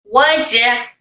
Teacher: जीम हमारे जबान के दरमियानी और तालु के दरमियानी हिस्से से टच होकर अदा होता है